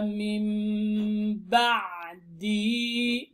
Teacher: من is noon and after that ba called إقلاب. Instead of min ba'di, you say mim